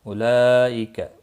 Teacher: उलाइका बड़ी मद है, मद मुत्सिल, 4 अलिफ के बराबर खींच कर पढ़ेंगे